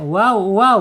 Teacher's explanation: makhrajnya ada di asyafatain, sifatnya ada pertama di al-jahar, ya tertahannya napas, kemudian ada di ar-rakhawah, mengalirnya suara, kemudian ada di al-istifal, terdamparnya lidah. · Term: waw